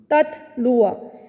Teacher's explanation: جب آپ وصلاً پڑھیں گے تو شدت اور ہمس دونوں صفات ایک ساتھ ادا ہو رہی ہیں.